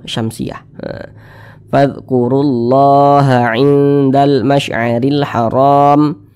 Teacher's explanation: alif lam syamsiyah itu biasa disebut juga dengan Idgham Syamsiyah karena dia cara membaca huruf lamnya itu diidghamkan